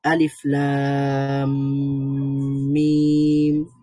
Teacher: মিম আলিফ আছে লাম টান দিলাম তারপরে মিমের মধ্যে তাসদিদ দিলাম মিমের মধ্যেও টান আছে চার আলিফ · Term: হরফি মুসাক্কাল